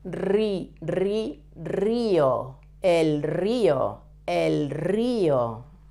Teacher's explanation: In Spanish, we never put a double R at the beginning of a word, but an R at the beginning of a word sounds always as a double R.